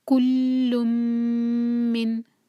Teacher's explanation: کلن نہیں پڑھیں گے، لم، اور پھر میم کو ہولڈ کریں گے، کل من، میم کو 2 سیکنڈز ہولڈ کریں گے۔